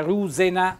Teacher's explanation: con l'accento tonico sulla u